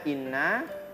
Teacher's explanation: Ketika ada tekanan digunakan menjadi khaysum. Kita menyebut huruf nun yang bertasdid kan lidahnya itu menempel di langit-langit. Maka angin yang keluar tidak melewati rongga mulut tetapi melewati rongga hidung. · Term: nun tasdid